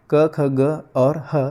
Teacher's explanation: अ, आ और क वर्ग साथ-साथ ह और विसर्ग इन सब का उच्चारण स्थान क्या होता है? कंठ होता है।